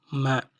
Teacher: இதழ்களை இணைத்து வாய்க்குள் காற்றை தடை செய்யாமல் மூக்கு வழியாக வெளிச்செல்ல விட்டு உச்சரிப்பதால் இதனை மூக்கொலி என்பர்.